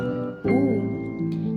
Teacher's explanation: vokal tinggi belakang diucapkan dengan kedua bibir agak maju dan sedikit mudar misalnya u yang ketiga vokal sedang sedang dihasilkan